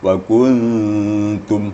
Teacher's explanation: nun mati bertemu ta, maka nunnya lebih disamarkan kepada ta. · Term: ikhfah